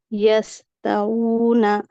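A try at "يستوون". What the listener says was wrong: यस्ताऊन। क्यों किया, इसको लंबा क्यों किया?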